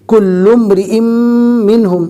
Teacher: جو تنوین ہے وہ میم کے ساتھ مدغم ہو جائے گی، مل جائے گی، کل امرئ منہم۔ بظاہر ایسا محسوس ہوگا کہ آپ نے تنوین کو نہیں پڑھا ہے۔ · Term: ادغام باگنہ